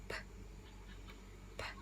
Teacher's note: the P sound, that's called an unvoiced sound, meaning only air passes through the mouth. If you put your hand on your throat, you should not feel a vibration.